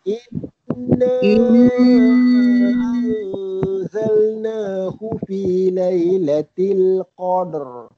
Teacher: Nun sabdu, dengung. Lepas tu di atas dia ada huruf mat panjang Dia kena dengung panjang. So kena standby dia punya napas dulu.